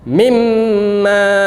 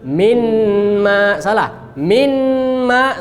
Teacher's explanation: Nah, kemana nunnya? Hilang, melebur. Gak boleh kita baca minma, salah. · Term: idgham